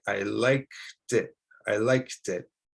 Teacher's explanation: So you'll want to connect the K sound to the vowel sound